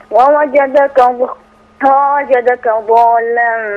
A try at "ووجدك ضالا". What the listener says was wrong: لا هنا مد بقى كتير شوية. ستة. كمان شوية، خليها عليك شوية. ستة عندك اتنين. لا عايزين زودها شوية.